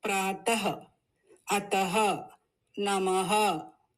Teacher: this matra aha adds a soft aha sound at the end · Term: visarg